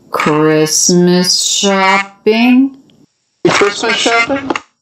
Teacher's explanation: Do you notice we dropped that T? That's because it comes between two consonants.